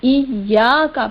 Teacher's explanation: ایاکا میں یا پر زبر اور اس کے بعد الف ہے، یہاں الف مدہ ہے، یعنی ایا پڑھنے کے بعد ایاکا پڑھیں گے. ایاکا، یہاں الف کو حذف نہیں کرنا ہے، ایاکا ہے یہ الف مدہ، ایک الف کی مقدار کے برابر کھینچ کر